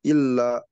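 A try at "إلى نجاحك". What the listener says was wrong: Ila, bukan illa.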